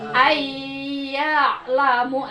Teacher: nun mati menghadapi iya, jadi asalnya an harus jadi ai, ya. Nah, ditahan Bu 2-3 harakat dengan rusuh, Bu ya. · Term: idgham